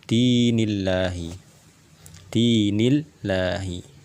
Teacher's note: lam yang berada di lafaz jalalah ini dia harus dibaca dengan tipis karena dia didahului dengan huruf yang dia berharokat kasroh